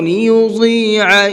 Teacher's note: لیضیع ضاد کو مبھر کے پڑھیں گے اور عین کو حلق سے نکال کر کے پڑھیں گے